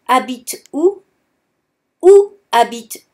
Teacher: no we do not hear the H at all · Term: the H is silent